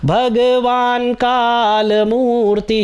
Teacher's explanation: यहाँ पर हलंत है तो भगवान का, न में अ का साउंड नहीं आएगा